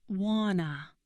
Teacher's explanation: This is want to, but the T completely disappears.